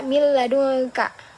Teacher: Jadi, ya enggak didengungin banget gitu, tapi ada tasdidnya juga gitu. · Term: Idgam bila ghunah